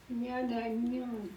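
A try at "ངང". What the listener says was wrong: Nya, pas nya. C'est ngang, ngang, ngang. Ngang, ngang, ngang.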